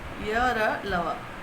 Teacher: जब जीभ जो है मुंह के किसी भाग को पूरी तरह से स्पर्श नहीं करती है, उसे कहते हैं अंतस्थ व्यंजन। जैसे कि य, र, ल, व, ये 4 होते हैं।